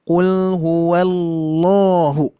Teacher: langsung ditebalkan lamnya ketika bertasydid ya